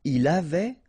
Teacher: il avait, final T not pronounced